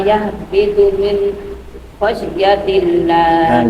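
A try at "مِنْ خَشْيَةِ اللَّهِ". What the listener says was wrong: Enggak boleh syakta. Min langsung nyambung. Min Enggak boleh dengung. Min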